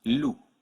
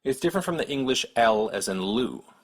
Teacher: your tongue up towards the roof of your mouth L and the French one only uses the front of the tongue L the tip of your tongue should touch just behind your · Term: French L